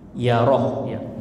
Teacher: Khairan yara, pendek ya rohnya ya.